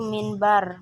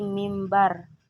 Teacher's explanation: bunyi n menjadi m terpengaruh oleh bunyi B yang berada di belakangnya yang sama-sama merupakan bilabial m&b antara m&b masih memiliki ke identikan sehingga disebut perubahan bunyi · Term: asimilasi